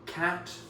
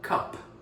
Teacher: These two sounds are one sound in Greek, and it's more like a flat A.